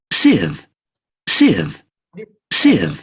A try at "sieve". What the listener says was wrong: It's not long. That's the difference between short and long.